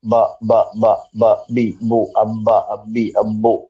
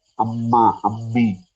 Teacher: ഹൈസൂം അവിടേക്ക് വരുന്നത് അപ്പോ മൂക്ക് പൊത്തി വെച്ചാൽ നിങ്ങൾക്ക് രണ്ടും ബ ആയിപ്പോകും ബായും മായും വ്യത്യാസം കിട്ടണമെങ്കിൽ മക്ക് മൂക്കും കൂടെ വേണം ബാ ക്ക് നിങ്ങൾ മൂക്ക് പൊത്തി വെച്ചാലും ബ പറയാൻ പറ്റും ബ ബ